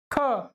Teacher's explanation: ख में क्या है ज्यादा सांस लग रही है हमारी ज्यादा वायु लग रही है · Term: महाप्राण